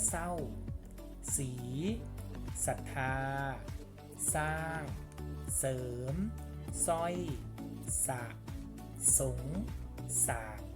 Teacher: มันไม่ออกเสียงรอเรือมันออกเสียงเฉพาะพยัญชนะข้างหน้า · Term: คำควบกล้ำไม่แท้